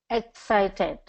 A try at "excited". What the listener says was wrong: So I'm kind of hearing excited with the EG. Excited. So we want to get excited. And then it's going to be second syllable stress. So we're going to go excited. Excited.